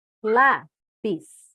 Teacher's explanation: Porque ela é uma paroxítona, ou seja, penúltima sílaba mais forte, terminada em IS.